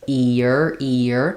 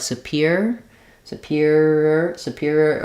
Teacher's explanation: between the E and the r we're going to have that vowel to vowel linking e e or a natural Y sound happens there